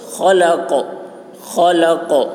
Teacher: خا کی وہ حلق سے ادا کریں گے، موٹی آواز ہوگی. قاف کی آواز موٹی ہوگی اور قلقلہ ہوگا.